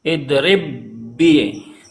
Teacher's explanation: Yang tadinya dua ba sekarang dijadikan satu baknya. Idrib bi. Ini dinamakan dengan idgham mutamasilain.